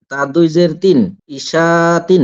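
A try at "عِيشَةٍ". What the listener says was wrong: এ আবার ভুল হয়ে গেল। টানটা এখানে হলো না।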